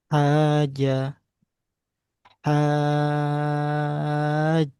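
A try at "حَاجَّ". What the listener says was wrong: Ditambah dua harokat lagi.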